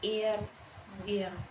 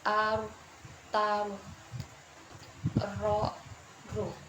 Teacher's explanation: Untuk huruf ro tipis, posisi pangkal lidah tidak perlu dinaikkan, biarkan pada posisi asalnya